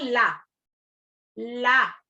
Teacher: जो जीभ है वो ऊपर तालु में भी लगती है और नीचे भी लगती है, वो ही व्यंजन एक पार्श्वी व्यंजन कहलाता है, यानी सिर्फ पार्श्व एक ही व्यंजन है, ला।